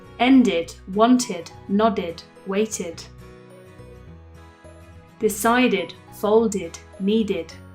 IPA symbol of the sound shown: ID